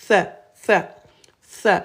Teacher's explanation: Avec 3 points, c'est la lettre th, th, la langue au niveau des incisives. Th, th, th, la langue devant, on ne colle pas les dents.